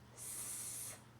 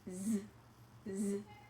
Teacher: When I say the sound S, I don't feel any movement or vibration in my throat. I'm just using air to produce that sound.